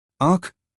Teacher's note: नासिक्य स्वर का मतलब है जब किसी स्वर की ध्वनि नाक से होकर बाहर आती है। उदाहरण आंख इसमें आ की ध्वनि नाक से आती है।